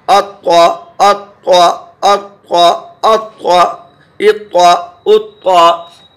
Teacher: मगर त्वा में ये हुरूफ मुस्तालिया है, थोड़ी आवाज़ भरे, मुंह भर के आवाज़ निकलेगी।